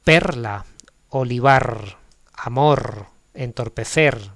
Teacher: eso es una R con su pleno sonido fuerte, ¿no? Que puede ir en final de sílaba o final de palabra.